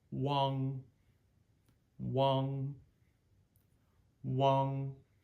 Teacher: the NG and the N endings in pinin are unvoiced and they're soft endings